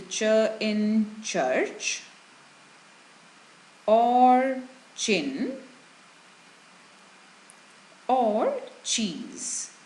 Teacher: When you say these words, try to notice that the main body of the tongue touches the hard palate in the articulation of the sound. Hard palate is the middle part, this area of the roof of the mouth. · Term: talu dhwani, cha